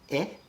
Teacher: i pronounce that kind of very forward and high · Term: front vowel